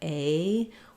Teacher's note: We glide from a tense A to a more lax and more closed I. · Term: diphthong